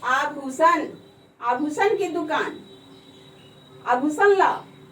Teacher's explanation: आभूषण जब हम बोलते हैं तो इसमें भू बोलने में जोर पड़ता है